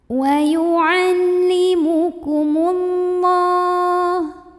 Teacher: lam jalalah ini dibaca tafkhim karena huruf sebelumnya mim barisnya dhammah. Maka bacanya tebal